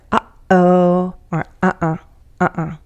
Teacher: if you can make those sounds you're producing the glottal stop